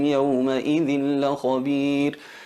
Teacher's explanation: abrimos un poquito los labios no nos los pegamos no pegamos los labios para que no se note la m claramente y exageramos o hacemos notar lo que es la nasa lización